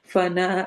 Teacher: فنا الف مدہ یعنی دو حرکہ لمبا کرنا ہے